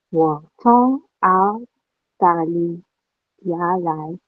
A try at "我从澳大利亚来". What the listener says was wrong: 对了 ，OK, it's fourth tone.